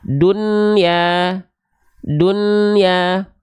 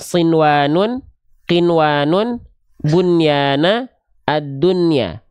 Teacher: Membaca nun sukun dengan jelas ketika bertemu dengan huruf waw atau ya yang terdapat dalam 4 kata ini. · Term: izhar mutlak